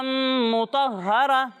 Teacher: وقف کرتے وقت گولتا کو ہا ساکن سے بدل دیتے ہیں۔